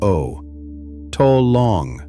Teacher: the O's are round and short, not the long English